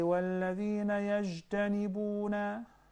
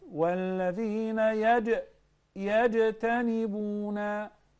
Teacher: it has the vowel sukoon, so you must shake the letter Jim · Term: shaking the letter Jim